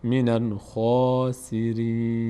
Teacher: منل اینجا خا، حرف خا، این حرف فتحه داره بعدش الف هست بعد صدای آ میگیره و چون خا یکی از اون 8 حرف هست که پر خوانده میشه، همزه و صاد و ضاد و تا و ذا و غین و قاف و خا و را، خا پر خوانده میشه دهان به سمت بالا باز میشه